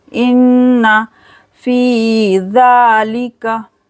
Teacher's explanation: नून पर गुन्ना करेंगे, फ़ी को खींचेंगे 2 सेकंड के लिए